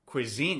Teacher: Is it on the first syllable or the second syllable? Cuisine or cuisine? Cuisine. It's on the second syllable.